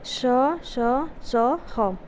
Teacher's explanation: वे व्यंजन ध्वनियाँ जिनका उच्चारण करते समय घर्षण के कारण गर्म वायु बाहर निकलती वे ऊष्म व्यंजन कहलाते हैं